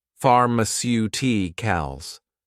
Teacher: Stress on the third to last syllable.